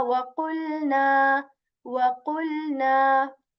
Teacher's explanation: Whenever we articulate this letter wow, we shape, we position our lips in the O form in round form.